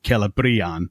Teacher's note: because it's a long vowel and that's what's indicated by the accent then because it's the penultimate syllable it takes the stress. So it is kellaban with the emphasis on the brie. · So it is Celebrian with the emphasis on the bri. Not directly because of the accent, but because of the long vowel, which is what the accent is indicating.